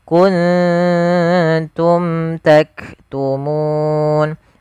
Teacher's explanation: Ikhfa di sini ikhfa hakiki yaitu suara nunnya kita kita samarkan kepada huruf ta. Jadi ikhfa itu membaca di antara idgham dan izhar.